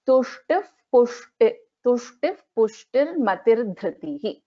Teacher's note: So there is a Visarga and then we have Pa. So this is an Upadhmaniya.